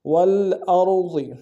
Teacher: را کو موٹا ادا کریں گے ضاد کو موٹا ادا کریں گے